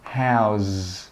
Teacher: that last sound should be like a z sound. Your throat should vibrate.